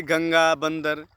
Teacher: अनुस्वार, इसका उच्चारण नासिका से होता है।